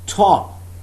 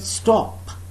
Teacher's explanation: So there is aspiration when I use this phoneme in the beginning of the word top. But there is no aspiration, unaspirated t in the word stop.